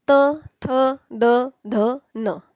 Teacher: आता हे त थ द ध न म्हणत असताना तुम्हाला लगेच लक्षात आलं असेल की आपली जीभ ना तालूला टच झाली आहे ना मूर्धन्याला टच झाली आहे. आपली जीभ थोडी पुढे दातांना टच झालेली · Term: दंत्या